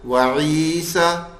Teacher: عی کھینچا, سا نہیں کھینچا. یا یوں پڑھ لوں وعیسیٰ, اب یہ بھی غلط ہو گیا, عی کو نہیں کھینچا.